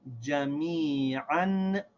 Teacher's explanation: We still pronounce this ayn with the two fathas as an